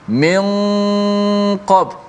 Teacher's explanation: huruf qaf ni huruf tebal, maka gunnah itu pun jadi tebal bunyi